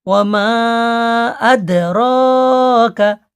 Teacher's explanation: মাটা চার আলিফ টান হবে